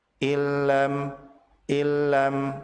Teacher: Nun mati bertemu dengan lam, maka nun tersebut dilebur ke huruf lam tanpa ditahan. Hukum bacaan ini disebut sebagai idgham bila gunnah, yaitu meleburnya huruf nun ke huruf lam tanpa disertai dengan gunnah.